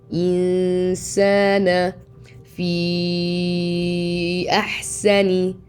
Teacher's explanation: And here on the noon we have إخفاء or hiding the noon of 2 حركات.